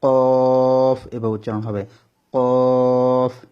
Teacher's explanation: তারপর 4 নম্বর মাখরাজ জিহ্বার গোড়া তার বরাবর উপরে তালুর সঙ্গে লাগিয়ে 2 নক্তাওয়ালা কফ, জিহ্বার গোড়াটা উপরে তালুর সঙ্গে টক্কর দিবে